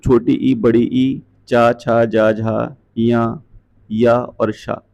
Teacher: ये सारे के सारे तालु से उच्चारित होते हैं